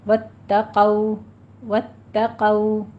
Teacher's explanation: واتقوا میں تا کے اوپر تشدید ادا کیجیے لیکن تا کو موٹا نہیں کرنا ، واتقوا نہیں کہنا، واتقوا، واتقوا، قو کو پور پڑھنا ہے،